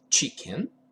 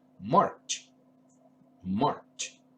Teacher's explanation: We cannot prolong the sound. For that reason, it's an affricative sound.